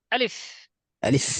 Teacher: হঠাৎ উচ্চারণ একদম কণ্ঠনালী থেকে